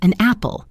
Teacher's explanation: The n sound from an attaches itself to the a sound from apple. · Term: linking